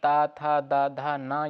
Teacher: दंत क्या है? त, थ, द, ध, न। ये दंत से है